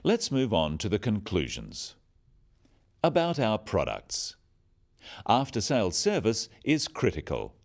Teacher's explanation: Note the downward intonation at the end of sentences.